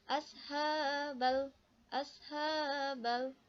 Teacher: huruf lam nya dimatikan lalu dibacanya jelas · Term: Alif Lam Qomariah